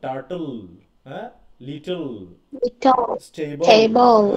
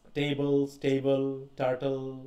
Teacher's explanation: They consist of a consonant followed by the letters এলি, তাহলে তার আগে একটা কনসোনেন্ট থাকবে এবং শেষে এলি থাকবে, এবং দ্য এলি সাউন্ড অনেকটা উল এরকম সাউন্ড হয়, উল।